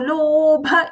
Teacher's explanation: low long, bha mahaprana short